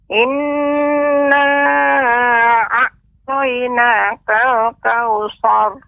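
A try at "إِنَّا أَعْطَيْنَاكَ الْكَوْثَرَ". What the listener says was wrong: Nah, sanya nggak boleh tebel Nek, tapi sanya tetap biasa. Sar, demikian.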